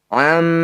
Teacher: Hamzah di lain kata disebut bacaan Mad Jaiz munfasil cara bacanya Ma yang bertanda layar atau bendera ini panjangkan lima harakat